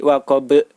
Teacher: Nah, cara membacanya yaitu dipantulkan. Sedangkan huruf ba, cara memantulkannya yaitu seperti bunyi huruf E atau E, jadi waqab. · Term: qalqalah